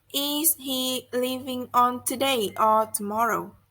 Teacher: the tone rises on the first part of the question and falls on the last part after or. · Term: Alternative questions